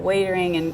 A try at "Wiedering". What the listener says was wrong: It's actually pronounced Vietering with a V. It's pronounced Vietering, so it's with a V, it's Dutch Wiedering, so that's where it comes from, and the boys have been giving me a bit of flack about that.